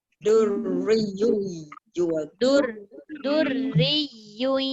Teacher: Dengungnya sekali je, iaitu tanwin bertemu ya.